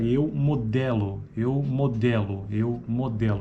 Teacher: Então esse E é a terceira vogal tônica oral, não arredondada, média baixa, anterior.